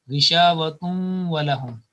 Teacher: some nasal sound will be lost when we are joining to the next.